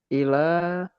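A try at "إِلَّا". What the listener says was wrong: Pakai tasydid nanti. Illa.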